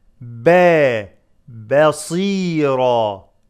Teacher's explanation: Ba is light, and then sad is heavy.